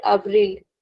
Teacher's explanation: In European Portuguese, we'll actually pronounce the L at the end.